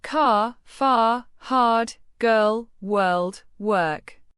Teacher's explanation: your tongue doesn't touch the top of your mouth. It curls slightly back and stays relaxed. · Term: American R